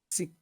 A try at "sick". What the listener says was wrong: Sick. Sick. Sick. You have to push back, not forward. Sick.